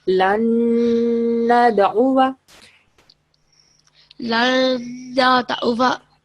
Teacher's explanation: We are making 2 second nasal sound because we are joining lam with noon mushaddad.